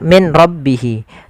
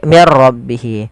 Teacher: Langkah pertama suara nunnya dimasukkan ke ro dan diganti menjadi r maka menjadi mirro maka menjadi diganti dengan ro maka mirro. · suara nunnya dimasukkan ke ra dan diganti menjadi r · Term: idgham bila ghunah, idgham bila gunnah